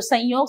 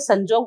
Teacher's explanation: य के परिवर्तन से जब ज हो रहा है तो संयोग से संजोग हो जाता है